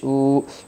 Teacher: واو زبر وا، حمزہ واو پیش او، واو مدہ ہوگا، واو سکن سے پہلے پیش ہے اس لیے واو مدہ ہوگا، واو مدہ کو ایک الف کا مقدار کھینچ کر پڑھے گے